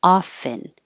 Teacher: Most common is no T, often. So make sure you open a lot.